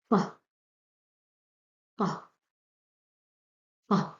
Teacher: The neutral sound of Ta with sukun, Ta, Ta, Ta. You feel it's like a burst.